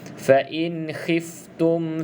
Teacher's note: Fa in hiftum, bunyi macam huruf ha, bukan huruf kha.